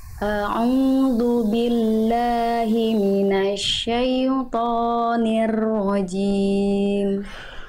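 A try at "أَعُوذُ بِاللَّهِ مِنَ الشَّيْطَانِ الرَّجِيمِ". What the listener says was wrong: Oke, tinggal di huruf ro. Ketika masuk ke huruf ro dia tebal ya, jangan nirro tapi nir. Nah, ketika masuk ke ro itu udah tebal, jangan jangan nir tapi nir.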